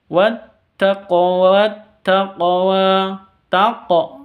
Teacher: ini qalqalah sughra karena ada di tengah. Nggih, di tengah kata.